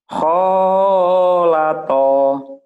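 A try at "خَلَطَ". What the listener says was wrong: Khalata. Pendek. Khalata. Pendek ya.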